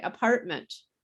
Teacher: we skip the t completely · When we say apartment, we don't even say the T.